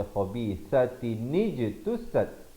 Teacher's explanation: Sat di hujung lidah ada bunyi hamas, bunyi angin di situ. Ikhfa hakiki di sini.